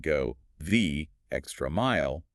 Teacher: with equal stress on every single word